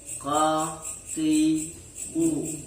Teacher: Qaf ini menggunakan pangkal lidah dengan ditempel pada langit-langit mulut yang lunak.